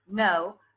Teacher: if I say no with diphthong O with schwa, no, that's British English